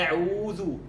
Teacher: هذه الضمة تمد، تصبح حرف مد، التي هي الواو المدية. الواو المدية حقيقتها عبارة عن ضمة مضاعفة بمقدار حركتين من الضمة